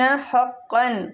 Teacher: حقا قاف کی جو تنوین ہے اس کو ہم اظہار حلقی کے ساتھ پڑھیں گے ، آگے حلقی حروف آ رہا ہے، علی المتقین مد عارضی